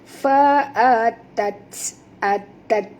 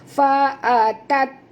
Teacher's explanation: Bunyikan hamas pada huruf ta yang mati